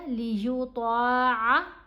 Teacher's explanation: तवा को पुर पढ़ा गया, मोटा पढ़ा गया